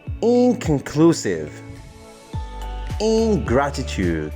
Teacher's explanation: In, whenever it is added to conclusive, the n sound is actually changed to a velar nasal n sound